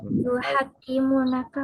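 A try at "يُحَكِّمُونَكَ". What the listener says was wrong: yuhakimuna. Ini kan kalau tanpa tasdid kan artinya menghukumi. Hakama yahkumu, menghukumi. Kalau hakama yuhakimu artinya mengangkat hakim, menjadikan hakim. Hakama yuhakimu, mengangkat hakim, ya.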